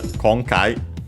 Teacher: it's actually one of those accented on the first syllable, so on the konkai